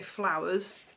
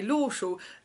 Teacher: in an Essex accent people will extend the first syllable and then shorten the last syllable